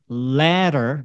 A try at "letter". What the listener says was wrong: 약간 좀 더 벌려주시고.